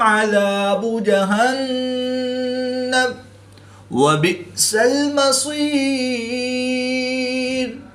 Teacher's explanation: نون مشدد میں ہمیشہ غنہ ہوتا ہے تو یہاں پر ہم غنہ آنے کر کے پڑھیں گے۔ حمزہ ساکن ہے جس کو جھٹکا دے کر پڑھیں گے